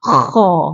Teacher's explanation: Kalau kha ni kita kena hembus supaya dapat bunyi kha tu.